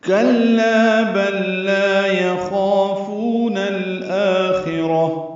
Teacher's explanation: کلا کاف باریک ہے، لام بھی باریک ہے، لا الف مدہ ہے